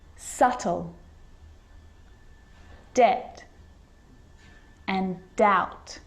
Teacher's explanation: doubt So see, in all of those examples, my lips aren't closing and coming together to form the B sound. I'm just pronouncing the T.